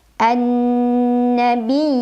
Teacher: Maka cara membacanya, karena ya-nya bertasydid, kita baca dengan nabar, kita tekan pada makhraj huruf ya, naikkan intonasinya, kemudian panjang 2 harokat. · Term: mad tamkin